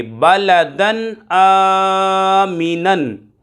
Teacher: نون دو زبر نن، آمینن، بلدن آمینن۔ یہاں پر 2 زبر کی تنوین کے بعد حمزہ حروف حلقی میں سے آ رہا ہے تو یہاں پر اظہار ہوگا، ظاہر کر کے پڑھیں گے، غنہ نہیں کریں گے